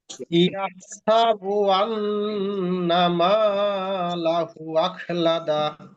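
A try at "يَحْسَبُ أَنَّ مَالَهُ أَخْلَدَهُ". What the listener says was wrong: একটু টান হবে আবার। তিন আলিফ টান হবে, মধ্যে মুনফাসিল। তিন আলিফের জায়গায় চার আলিফ, পাঁচ আলিফ হয়ে গেল সমস্যা, কিন্তু তিন আলিফের কম হতে পারবে না। এখানে হচ্ছে মধ্যে মুনফাসিল,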